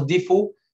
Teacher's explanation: move the haraka of the Hamza to the sakin before it, it becomes difu